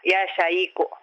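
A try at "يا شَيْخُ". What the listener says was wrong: Ya syaikhu. Mana itu kha. Kha. Kha. Khu. Ya syaikhu.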